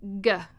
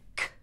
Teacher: same place of articulation but one's voiced, one's voiceless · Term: Velar